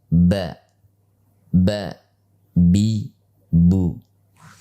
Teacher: huruf ba tempat keluarnya adalah bibir. Tempat keluarnya kedua bibir. Sehingga pengucapan ba yang benar adalah dengan mengatupkan kedua bibir.